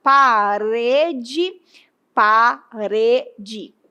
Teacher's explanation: Veja que o re é a sílaba forte. Então essa palavra apresenta acento tônico porque está indicando aí que é a sílaba mais forte, é a sílaba tônica.